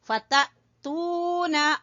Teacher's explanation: الف کے اوپر جزم ہے تو یہاں اس لیے یہ حمزہ ہے تو اس کے اوپر ہم جھٹکا دیں گے. فتأتون تو کو کھینچیں گے واو مدہ کی وجہ سے